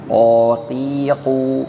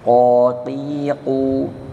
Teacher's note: Qa itu letaknya di pangkal lidah. Jadi di pangkal lidah, ya.